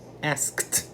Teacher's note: Porque a letra K também não tem vibração. Então, vem um T para compor o som do ED.